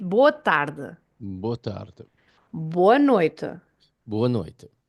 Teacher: but the sound of the E is the sound U.